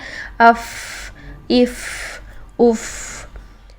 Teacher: साकिन हालत में इसको अदा करते हैं तो इसमें सांस और आवाज दोनों जारी रहते हैं · فا، فی، فو. اور جب ہم ساکن حالت میں اس کو ادا کرتے ہیں تو اس میں سانس اور آواز دونوں جاری رہتے ہیں